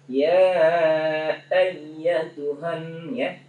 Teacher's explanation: Nah, kemudian ya ayyatuhan nafsul itu tasdid yang itu kenapa apa kayak gunnah ya. Ya nggak boleh terlalu lama ya. Sekedar bertasdid aja dia.